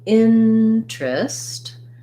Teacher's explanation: So here's another letter E that's going to be a reduced I vowel, first syllable stress, and not 3 syllables, but 2.